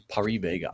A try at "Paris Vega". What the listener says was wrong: And I usually pronounce the S at the end of it, Paris.